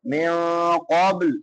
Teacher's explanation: خلو من قبل، من نون ساکن ہے، بعد میں حروف اخفا میں سے قوف ہے تو یہاں پہ اخفا کریں گے. من قبل، قوف جو ہے یہ حروف مستعالیہ میں سے ہے، موٹا کر کے پڑھیں گے